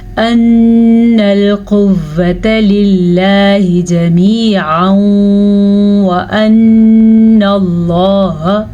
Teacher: تنوین کے بعد یمون میں سے واو ہے تو ادغام بالغنہ کا قاعدہ کریں گے